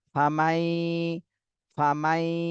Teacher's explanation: নুন সাকিনের পরে ইদগামে বা গুন্নার হরফ ইয়া, এজন্য ইয়াকে এই মিমের সাথে মিলাতে হবে, গুন্না সহ মিলাতে হবে